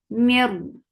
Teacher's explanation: this is idgham without gunna, so you're not keeping the sound into your nose at all.